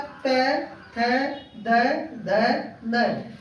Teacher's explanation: इसको बोलते समय हमारी जीभ जो है दांतों से टकरा रही है। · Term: दंत व्यंजन